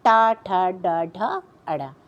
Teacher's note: पूरा टवर्ग, र और षटकोण वाला श, इसको मूर्धा से बोलते हैं